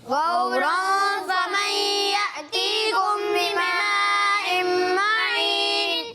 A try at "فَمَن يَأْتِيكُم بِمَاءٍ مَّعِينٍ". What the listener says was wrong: آپ ابھی بھی غنہ نہیں کر رہے ہو. یأتیکم بما نہیں، یأتیکم تھوڑا ٹھہرو یہاں پر، ٹھیک ہے. غورا فمن یأتیکم بماء معین.